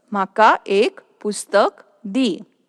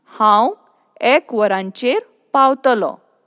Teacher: One is close sound ek, and the second sentence how ek varancher pautalo. Here ek is with open sound.